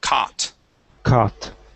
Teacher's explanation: Instead of cow and adding in a U, we only pronounce the ah sound.